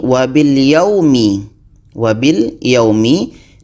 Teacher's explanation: Di sini ada waw mati. Sebelumnya itu berbaris atas. Maka waw mati ini dibaca pendek.